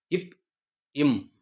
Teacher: இப் இம் ஆகிய இரண்டு மெய் எழுத்துக்களும் மேலிதலும் கீழிதலும் பொருந்துவதால் பிறக்கிறது.